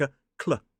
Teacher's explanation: start with a C and a L, put it together like /kl/, and then following it is that air diphthong /eə/ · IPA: /kleə/